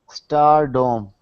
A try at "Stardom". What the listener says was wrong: So right now I'm hearing your tongue is curling in the middle of your mouth like this. I want it, so instead of saying stardom, I want it to sound like star. Stardom.